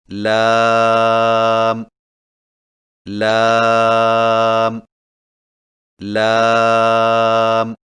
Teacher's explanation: لام کی ادائیگی میں زبان کے باریک کنارے کو اوپر والے دانتوں کے مسوڑوں سے لگا کر باریک آواز میں پڑھیں